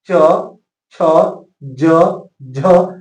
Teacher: जैसे ही आप च छ जझ बोलेंगे च छ तो आपका जीभ जो है तालू में सटेगा और इसका उच्चारण स्थान इस प्रकार से तालू होता है च · जैसे बोल करके इसका प्रयोग कीजिएगा, च, छ, ज, झ। जैसे ही आप च छ ज झ बोलेंगे, च छ, तो आपका जीभ जो है तालु में सटेगा